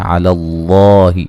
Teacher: لفظ اللہ کو موٹا ادا کریں گے, پہلے حرف پر زبر ہے